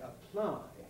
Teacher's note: that p is strongly aspirated which must therefore indicate that it's initial in the syllable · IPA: əˈplaɪ